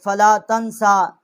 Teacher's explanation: سین کے اوپر کھڑی زبر ہے اور چھوٹی مد ہے اس کو 3 الف جتنا ہم نے اس کی آواز بلند کی ہے